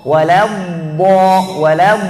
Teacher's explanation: itbaq itu tebalnya harus lebih kuat semua lidah kita naik atas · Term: huruf itbaq